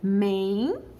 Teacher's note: O E seguido de N, então eu já tenho o E sendo nasalizado por este N